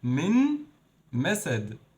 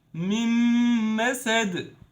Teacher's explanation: We skipped noon, we discard this noon, and we mixed those 2 words or those 2 letters, and we pronounced this meme as a mushaddad meme. Have a shadda or double meme. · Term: Idgham